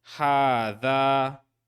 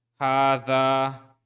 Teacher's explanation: The aleph is actually lengthening the dal, and the ha is lengthened by the madda fatha. So it's actually two long fathas in this word. And so we recite hadha.